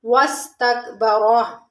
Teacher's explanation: را کے اوپر زبر ہے، اس کو پر پڑھیں گے۔ واستکبر، تک کاف کو باریک پڑھیں گے۔